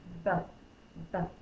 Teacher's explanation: My lips are closed, I'm popping the air.